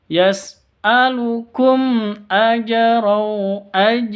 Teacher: Mim mati bertemu dengan hamzah, bacanya izhar safawi jelas.